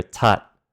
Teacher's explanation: The first T is aspirated t, but the last T is not